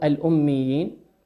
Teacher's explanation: قوله سبحانه وتعالى في الأميين، كلمة الأميين ننظر إلى كلمة الميم، أحكام النون والميم مشددتين. الميم تغن بمقدار حركتين بإطباق الفم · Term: ميم مشددة